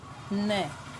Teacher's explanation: जैसे दंत न, न है दंत और नासिका है, क्योंकि जब हम न को बोलते हैं तो हमारी जो जीभ है वो दांतों से स्पर्श करती है और ध्वनि नाक से आती है, तो नासिकीय है।